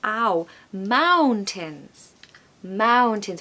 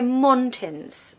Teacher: we have this lovely sound that we get a lot in the modern RP accent which is ow it's like when someone hits you and you're like ow that's